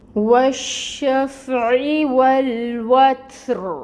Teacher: حرکت کو ساکن کریں گے اور را کو پر پڑھیں گے یا مفخم کریں گے، موٹا ادا کریں گے را کو · تا ساکن ہے، تا میں ہمس ہوگی، ہمس کو واضح کریں گے۔ را کے نیچے زیر کی حرکت ہے۔